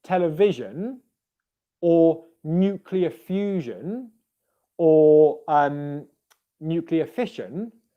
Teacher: the i o n ending will always be a schwa plus an n syllable · the I-O-N ending is always a schwa and an N sound. And what that means, because there's a schwa in there, is it means that it's always an unstressed syllable.